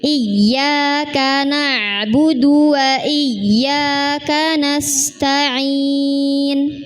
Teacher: Saat i di situ ada tasydid pada huruf ya. Di situ ada hentakan, tetapi bukan mengayun